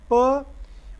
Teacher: Manner of articulation में क्या है कि जो ए ओरल पैसेज है वो स्टॉप हो जाता है, लाइक फ, बंद हो गया मुंह। और ये बाइलेबियल है, ये जो स्टॉपेज होगा ये दोनों होंठों से होगा। बाई कहते हैं दो को, लेबियल कहते हैं लिप्स को।